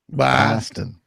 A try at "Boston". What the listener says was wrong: You're putting too much emphasis on "bah." It's like No. Boston.